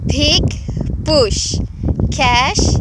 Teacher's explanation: you're going to hear the lack of aspiration in these voiceless consonants that she's producing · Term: unaspirated voiceless consonants